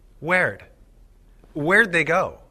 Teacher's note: in informal conversation we often change did to D after a question word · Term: contraction D